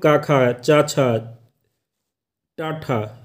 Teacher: पहला है अघोष वर्ण, जिनके उच्चारण समय स्वर तंत्रियों में कंपन न हो